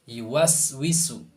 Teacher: itu zai itu dibarengi dengan nafas atau pelepasan suara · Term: rohwah